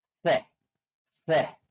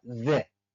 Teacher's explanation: Yang satu tadi pertama kita bunyikan dengan se tanpa ada vibrasi pada tenggorokan, sedangkan z ada vibrasi pada tenggorokan kita.